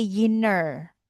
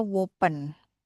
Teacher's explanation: words like inner and open can get an extra sound before the first vowel so inner sounds like a yinner and open like a wopen.